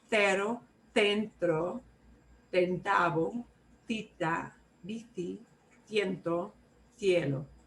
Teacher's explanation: you'll hear a lot of th going on. That just means that person is from Spain.